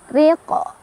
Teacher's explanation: Cara bacanya panjang 2 harokat. Ri, dan ri-nya dibaca secara tarqiq karena ra-nya barisnya di bawah atau tipis ya, ditipiskan ri.